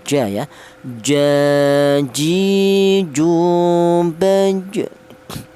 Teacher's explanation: Huruf jim ini kelnya huruf berasal dari tengah lidah